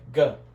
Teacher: a single vowel in this case the Yota is a vowel it's going to sound like a g not like a j but like a hard G like go